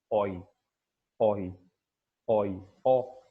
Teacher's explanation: Yes, so a bit, lips would be a bit rounded, okay, in this. Okay, so the glide begins near the back mid open position and moves towards E